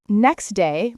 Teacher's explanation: Sometimes sounds even get dropped entirely. For instance, next day might sound like neck day.